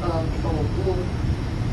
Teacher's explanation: the non-high Proto-Indo-European vowels, which would be like a, o, u, all merge into this kind of pan-vowel a.